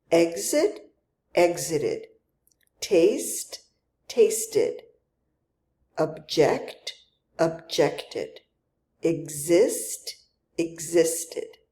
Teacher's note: the past tense verb is going to end with the itid sound and this adds a syllable